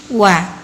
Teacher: Wa keluar dari dua bibir atas bawah mengumpul.